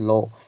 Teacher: জিহ্বার অগ্রভাগকে মুখের মাঝামাঝি দন্তমূলে ঠেকিয়ে রেখে জিহ্বার মূল দুই পাশ দিয়ে বায়ু নিঃসৃত হয় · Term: পার্শ্বিক ধ্বনি